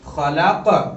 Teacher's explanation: قاف حرف قلقلہ میں سے ہے. قاف پر جزم ہے. قلقلہ ہوگا.